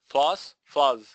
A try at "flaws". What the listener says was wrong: Why are you saying it so short? Don't make it short. Make it long.